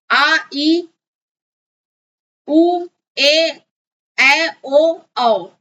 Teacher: दीर्घ सुर यानी 2 मात्रक सुर बोलते हैं, 2 गुना समय लगता है